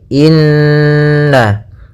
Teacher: adanya Nun berharakat tasdid ya maka cara membacanya adalah kita tahan dulu gunahnya · kita tahan dulu gunnahnya inna, baru kita baca na